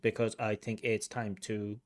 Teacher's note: pronunciation feels a little bit staccato it doesn't feel totally smooth you do hear a little bit of gaps between syllables